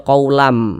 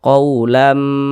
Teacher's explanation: Jadi, di bagian lam, kita menahan suara itu sejenak. Kita memanjangkannya selama dua harakat. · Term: ghunnah